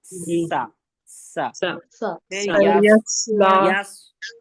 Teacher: सीन की आवाज में सी टी होती है